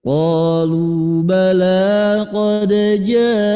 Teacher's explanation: Tinggi dulu baru turun.